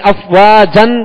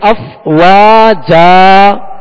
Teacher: وقف کرتے ہوئے الف سے بدلیں گے، یعنی ایک حرکت پڑھیں گے، زبر پڑھیں گے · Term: الف سے بدل کر